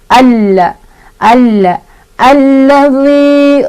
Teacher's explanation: Dibacanya langsung masukkan di huruf lam sambil ditekan. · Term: alif lam syamsiah